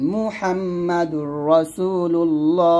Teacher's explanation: মিম পেশ মুহা, মিম জবর হাম, গুণ করবেন